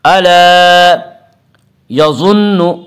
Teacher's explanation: الا الف مدہ، الف ہمیشہ مدہ ہوتا ہے، الف سے پہلے ہمیشہ زبر ہوتا ہے، الف مدہ کو ایک الف کے برابر کھینچ کر پڑھیں گی۔ الا یظن ضا کو پر پڑھیں گے۔ ضا حروف مستعلیہ میں سے ہے، حروف مستعلیہ 7 ہیں جن کا مجموعہ خصہ ضغط قز ہے، جو ہمیشہ ہر حال میں پر پڑی جاتی ہیں۔